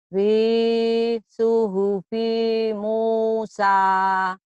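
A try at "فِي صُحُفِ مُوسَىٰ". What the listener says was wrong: bagus tapi pi-nya pendek. Fi suhufi Musa. Lagi.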